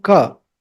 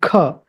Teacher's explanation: Kha is K, H and A. So you have to give a little bit of that air, that Ha also